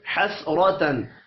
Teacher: حسرتن را زبر کی وجہ سے پر پڑھا جائے گا. تن تنوین کے بعد حروف حلقی آ رہا ہے، یہاں پر اظہار حلقی ہوگا، غنہ نہیں ہوگا.